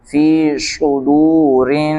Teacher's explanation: را کے نیچے زیر، را کو بری کریں گے